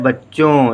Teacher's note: थोड़ी थोड़ी नाक से आवाज़ आ रही है